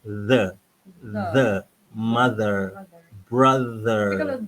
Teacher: lidah mesti di antara dua gigi di hujung lidah